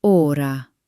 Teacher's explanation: This is a round, deep sound similar to the O in the word pot or story.